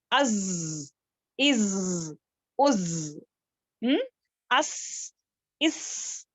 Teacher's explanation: ز سین اور صاد ان کی صفات کیا ہے سیٹی والی ہے